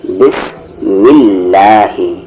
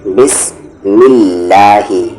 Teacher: اللہ کے سیکنڈ والے لام سے پہلے اگر پچھلے والے حرف پر زیر ہو تو وہ اللہ کے لام کو ہم پتلی آواز سے لائٹ ساؤنڈ سے پڑھتے ہیں